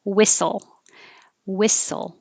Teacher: the h is not necessary and the t is not necessary